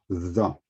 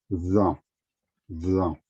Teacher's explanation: Once we add the dot above this letter, the sound changes to the. There is like a vibration because what you do is that you put the tip with your tongue between your teeth